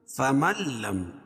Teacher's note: ادغام بلا غنہ، یعنی ادغام تام، کیونکہ نون ساکن کے بعد ادغام بلا غنہ کے 2 حرف لام اور را میں سے لام ہے